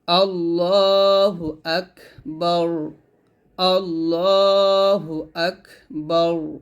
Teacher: যদি আমরা এখানে থামি তাহলে র টা সাকিন হয়ে যাবে